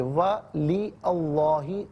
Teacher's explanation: اللہ کی حرف لام کو یا باریک پڑھیں گے اس لیے کہ ما قبل حرف کے نیچے زیر ہے، زبر یا پیش ہو تو پر پڑھتے ہیں، زیر ہو تو باریک پڑھتے ہیں۔